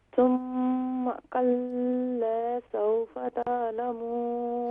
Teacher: لام کے بعد الف کی علامت ہے، تو اس کا مطلب ہے اسے ہم ایک الف کی مقدار کھینچیں گے کیونکہ یہ الف مدہ ہے.